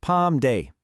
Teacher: Notice the level tone on that first syllable.